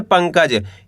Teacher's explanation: यहाँ पे पा के ऊपर अनुस्वार की मात्रा है, यानी कि अंग की मात्रा। यहाँ पे अपन करेंगे क्या? आधा ना का उच्चारण तेजी के साथ निकालेंगे।